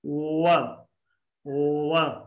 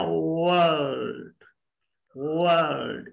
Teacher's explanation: डब्ल्यू की आवाज बायलैबियर round, दोनों को मिलाकर गोल करना है